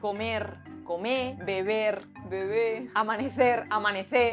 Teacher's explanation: Otra característica es la pérdida de la R a final de palabra.